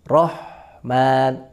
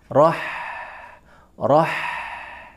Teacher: Ha sifatnya dia istifal. Tipis dia, bukan isti'ala. Maka ketika disukun, huruf ha juga dibaca tipis.